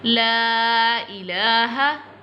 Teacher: lam will be stretched because long mad is on the lam, so stretch it, لمبا کرنا لام کو.